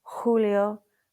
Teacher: So it's like an H sound, breathy English H.